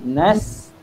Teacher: desiran tapi tidak sampai jadi qalqalah kan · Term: huruf sin